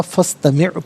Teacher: فا پر زبر ہے، اسے استمع کی سین ساکن کے ساتھ ملائیں گے، درمیان میں سے الف یعنی حمزہ کو حذف کیا جائے گا